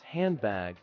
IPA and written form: ˈhændˌbæɡ (handbag)